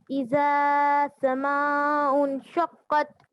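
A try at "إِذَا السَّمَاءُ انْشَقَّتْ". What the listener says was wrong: نہیں اذا نہیں اذا السماء زال کو سین میں ملائیں گے اذا السماء انشقت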